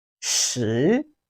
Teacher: It has the rising tone of Chinese language, which is the second tone, rising tone.